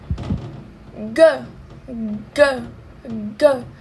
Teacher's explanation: Ele vai ser um som velar, tá bom? Que a nossa língua vai estar encostando no palato mole. G, G. Pode ver que a língua de vocês, ela vai para trás e se aproxima.